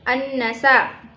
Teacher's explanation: karena ada huruf nun yang bertasydid cara membacanya masuk dengan mendengung